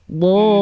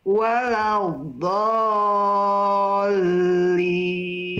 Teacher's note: jadi yang dipanjangkan itu do-nya, mad lazimnya. Do, Iya. ketika masuk ke lam, dia hanya ditekan saja.